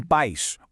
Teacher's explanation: Dá uma olhada nos exemplos. Em pais, o A é a vogal forte e o I é a semivogal, mais fraquinha. Ficam juntos. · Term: ditongo